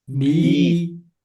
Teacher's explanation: hijaiyah yang berharakat kasrah bunyinya I. Jangan ada yang e b gitu ya ke I.